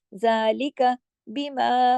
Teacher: मीम के साथ अलिफ आ गया ना, तो ये अलिफ यहाँ बारीक पढ़ा जाएगा।